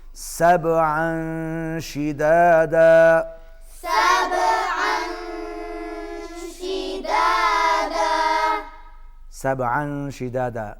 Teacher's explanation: با پر قلقلہ ہوگا کیونکہ با حروف قلقلہ میں سے ہے